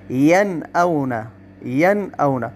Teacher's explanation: نون ساکنہ اور تنوین کو بغیر غنہ کے ظاہر کر کے پڑھنا، اس کو چھپانا نہیں، اس کو ظاہر کرنا ہے۔ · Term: اظہار